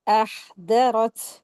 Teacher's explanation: तो यहां पर भी र को हैवी करेंगे। ता साकिन जब हो जाता है तो उसको हम के साथ अदा करते हैं। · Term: हम्स